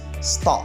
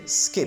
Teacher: The phonological transcription of the voiceless stops, as you can see in these three words, there is an absence of puff of air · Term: unaspiration